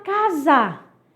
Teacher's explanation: Esse S tem um som de Z.